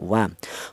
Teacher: dihasilkan dari kedua bibir yang renggang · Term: huruf wau